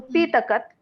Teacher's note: P has a high tone and Takat has a normal tone.